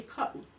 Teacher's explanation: the glottal stop, where we fail to pronounce the T in the word.